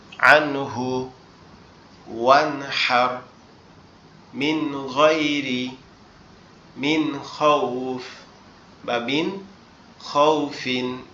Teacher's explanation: হামজা হা, আইন হা, গইন খ, এই ছয়টা হরফের যে কোনো একটা যদি নুন সাকিন অথবা তানবিনের পরে আসে, তাহলে সেটাকে কি করতে হবে, গুন্না ছাড়া মিলিয়ে স্পষ্ট করে পড়তে হবে। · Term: ইজহার